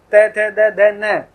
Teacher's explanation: ते, थे, दे, धे, न, सब ऊपर के दांतों पर जीभ लग रही है।